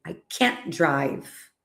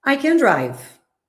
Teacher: So we never emphasize can. However, when we have a negative sentence, we have to stress can't. We don't pronounce the t, but we know the sentence is in the negative form because we emphasize the structure.